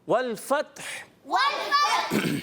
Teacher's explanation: والفتح تا بھی ساکن, اور وف کرنے میں ہا کو بھی ساکن کریں, اور ہا کی ادائیگی کلیئر ہو